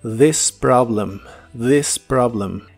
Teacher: la th de la palabra this es la versión que suena como una d vibrante